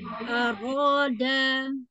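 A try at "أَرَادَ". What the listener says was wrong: Danya masih panjang.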